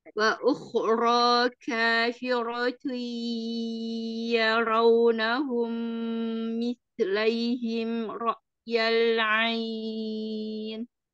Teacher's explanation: Wa ukhra wa ukhra kafiratu nya kro-nya dua um. Wa ukhra ro-nya dua harakat.